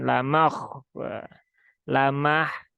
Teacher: ha sukun dia punya sifat salah satunya adalah e rohoah ya rohwah dan dia huruf tipis maka ucapkan dengan tipis ya jangan ditebalkan